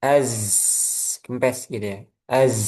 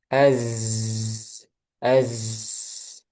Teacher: Maka kita tahan ee sifat ee z-nya az gitu ya. Jadi jangan sampai pindah ke makhrajnya sin ketika sukun ya.